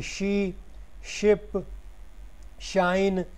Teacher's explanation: ये भी फ्रिकेटिव है, एल्वियो पैलेटल है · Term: श साउंड